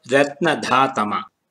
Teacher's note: The main accent or the udātta is on the vowel a of the syllable dha. The syllables ra and na are marked with the anudātta.